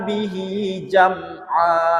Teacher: Bihinya panjang, hinya karena itu adalah kasroh, ya, kasroh panjang. Kasroh panjang dibaca panjang sama dengan fathah panjang tadi.